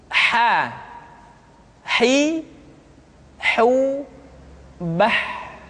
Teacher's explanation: huruf ha dikeluarkan dari tengah-tengah tenggorokan